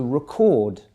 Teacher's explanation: meeting that's a record but if you shift the focus the the emphasis of your voice towards the second syllable you get the verb